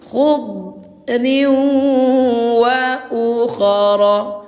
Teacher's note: Tanwin dimasukkan ke huruf wau disertai dengung dua harakat. · Ini Bunda tanwin baris 2 di bawah berjumpa dengan waw, hukumnya idgham bi gunnah. Tanwin dimasukkan ke huruf waw disertai dengung 2 harokat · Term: idgham bighunah